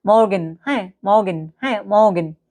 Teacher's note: German ভাষায় আর জিভ কাঁপিয়ে বা গলায় উচ্চারিত হয়। ঠিক আছে, গলায় ঘষা দিয়ে উচ্চারিত হয়, বাক্যের শেষে উজ্জ থাকে।